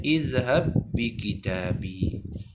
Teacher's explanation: Jadi ba yang pertama telah pun dimasukkan ke dalam huruf ba yang kedua. Jadi bacaannya izhab bi kitabi. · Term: Idgham mutamathilain